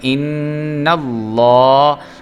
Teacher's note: نون جو ہے وہ مشدد ہے تو اس پہ غنہ بھی ہم نے کرنا ہے